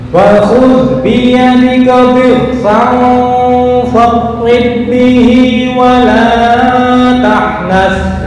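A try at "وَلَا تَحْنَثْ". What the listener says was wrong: Kepanjangan wala tahnas.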